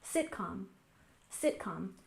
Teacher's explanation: has stress on the first syllable sitcom sitcom this is a shortened word from situational comedy it's · Our next word, sitcom, has stress on the first syllable, sitcom, sitcom.